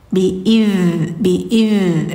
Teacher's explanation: Jadi enggak id tapi faha zamuuhum biid nillah. Jadi huruf dza itu dia mengalir rakhawah sifatnya · Jadi huruf za itu dia mengalir, rokhwah sifatnya. Bi'idz mengalir ya.